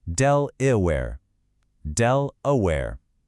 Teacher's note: What if we try stressing the first syllable, del? Now, what happens to that A in the middle syllable? It's unstressed, so it gets lazy. It turns into a schwa